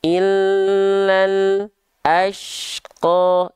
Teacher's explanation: lam putus suara itu nama sifatnya adalah syiddah. Syiddah itu tertahan suaranya.